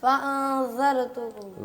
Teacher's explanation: را کو بھی پر کرنا ہے اور ذال کی آواز ہے زا کی نہ ہے